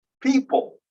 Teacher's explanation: The P is aspirated on the first one, but not on the second one.